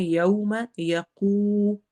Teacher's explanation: واو کو ادا کر رہے ہیں، لین ہو رہا ہے، ہم نے ہونٹ گول کرنے ہیں